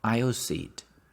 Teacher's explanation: Aisle, we don't pronounce the S.